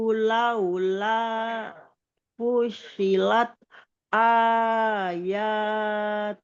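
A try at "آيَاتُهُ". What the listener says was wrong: Tuhnya jangan dipanjang Bun. Ayatuh.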